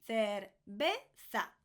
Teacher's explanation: The V's and the B's in Spanish are always, everywhere, pronounced like a B.